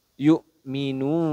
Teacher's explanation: Jadi boleh satu Alif boleh dua Alif atau boleh tiga Alif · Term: Mad Arid Lis sukun